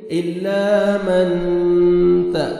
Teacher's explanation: من، نون ساکن کے بعد حروف اخفا میں ستا ہے، آپ نے اخفا کرنا ہے، نوز میں ساؤنڈ لے کے جائیں گے